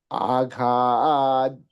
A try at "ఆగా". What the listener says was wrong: ఆఘా ఒత్తు చూస్తున్నారు లేదండి అక్కడ. ఘా చెబుతున్నారు, ఘా చెప్పకూడదండి, గుర్తుపెట్టుకోండి.